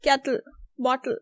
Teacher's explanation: Then we have laterally released T, which is kettle, bottle.